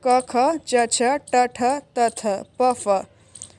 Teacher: जिन वर्णों के उच्चारण में स्वर तंत्रियों में कंपन उत्पन्न नहीं होता है अघोष वर्ण कहलाते हैं। प्रत्येक वर्ग का पहला और दूसरा वर्ण अघोष वर्ण है।